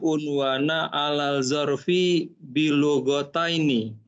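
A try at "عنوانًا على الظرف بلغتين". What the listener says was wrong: Masya Allah. Kata betul unwana ala zarfi bilughataini.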